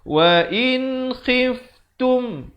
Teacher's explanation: Sempurnakan saja bunyi nun matinya, jangan dipanjangkan. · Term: izhar halqi